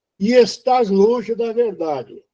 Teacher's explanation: Então eu peguei o e com o e do estás e juntei.